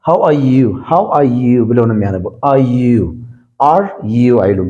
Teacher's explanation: according to British accent, British pronunciation, after vowel r is silent totally